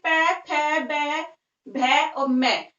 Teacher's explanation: तो हमारे जो लिप्स हैं वो दोनों आपस में टच हो जाते हैं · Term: ओष्ठ